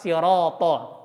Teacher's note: Jadi walaupun huruf to itu punya sifat itbaq, tapi kalau huruf ro itu ada alifnya, maka ketebalan ro yang ada alifnya itu lebih tebal daripada to